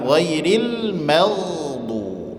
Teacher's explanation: ma tipis, gha tebal, maghdu, jangan dibaca maghdu.